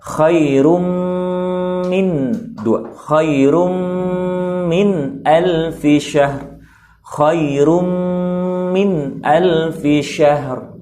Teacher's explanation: Indal mim al-maqsurah, pada huruf mim yang kasrah, ya, dalam keadaan kasrah ke bawah, maka hukumnya bi gunnah harakatain, dengan gunnah 2 harakat